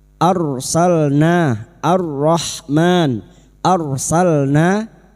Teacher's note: Laqod arsalna ro sukun yang didahului fathah. Kita baca tafkim arsalna arrahman arsalna lam sukun salna na fathah diikuti alif dua harakat kita panjangkan mad thbi'i. · Laqad arsalna, ra sukun yang didahului fathah. Kita baca tafkhim